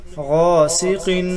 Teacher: سین مثل سیٹی کی آواز آئے گی